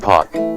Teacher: when you say p there is a 60 millisecond lag between the time you start the P sound and the time your vocal cords start to vibrate